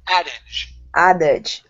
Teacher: The stress is at the very beginning. Instead of adage, it's a addage.